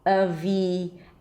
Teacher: So the first syllable is just going to be a schwa. The second syllable, a high E, avi. And then the primary stress, the longest syllable, is at the end, L with a dark L.